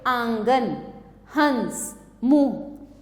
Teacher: इसमें नाक और मुंह दोनों से उच्चारण किया जाता है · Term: चंद्र बिंदु